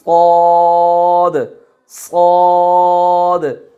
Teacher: सॉद जो है वो थोड़ा सा उसमें इस्तिअला पाया, इस्तिअला यानी हमारी ज़बान थोड़ी सी ऊपर की जानिब उठेगी, इस्तिअला ऊपर की जानिब उठेगी सॉद के अंदर, सॉद, सॉद।